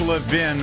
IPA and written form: ləˈvɪn (Levin)